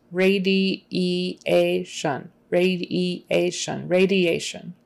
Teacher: And the I-A are two separate vowel sounds.